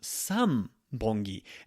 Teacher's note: son becomes some Bunge and that's because of the B sound in there